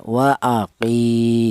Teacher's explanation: Alasannya ada ya mati yang didahului huruf yang berharakat kasrah. Panjangnya yaitu satu alif atau sama dengan dua harakat atau dua ketukan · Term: mad thobi'i, mautabi'i